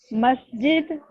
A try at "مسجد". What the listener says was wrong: بولیے, مسجد, سین کو کلیئر کریں, مسجد. دال پہ کریں, مسجد, مسجد,